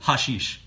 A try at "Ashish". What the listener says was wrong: It's actually Ashish. The H at the start is silent.